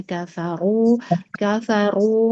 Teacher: hati-hati dijaga ro tebalnya. Untuk konsisten huruf ro tebal hati-hati saat berharakat fathah ya kecuali berharakat kasrah.